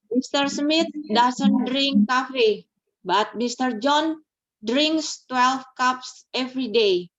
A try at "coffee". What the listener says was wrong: Smith doesn't bilangnya coffee ya, bukan cafe, tapi coffee. Coffee ya.